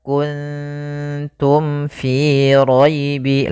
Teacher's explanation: jelas syafawi itu berkaitan dengan syafah kita dengan bibir kita maka mim mati itu kan makhrajnya daripada bibir kita maka mim itu kan rapat Ma maka di sini harus jelas suara mimnya tidak boleh ditahan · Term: izhar syafawi